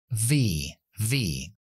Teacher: dental dientes de arriba en los en el labio de abajo y soplamos pero con voz que la f no lleva voz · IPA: /v/